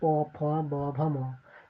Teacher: প ফ এগুলা উচ্চারণ করতে দেখবা যে দুই ঠোঁট একসাথে লাগতেছে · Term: অষ্টধ্বনি